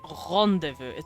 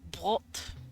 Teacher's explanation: French R's are swallowed just a bit more than German R's